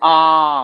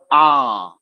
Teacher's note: जैसे ही आप उच्चारण करते हैं आ पूरा मुंह एकदम खुला रहता है। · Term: विवृत